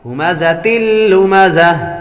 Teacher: ہمزة لمزہ، اور آخر میں یہاں پر ہا پڑھیں گے، گول تا حالت وقف میں ہا سے بدل جاتی ہے، اس لیے اس تا کو جب وقف کریں گے تو اس کو ہا میں بدل دیں گے۔